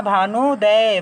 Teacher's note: इसी तरह से अगले उदाहरण में हम देख लेते हैं भानु प्लस उदय। ह्रस्व उ और ह्रस्व उ हमारा मिलकर बन गया है दीर्घ उ। तो हमारा नया शब्द बना भानुदय।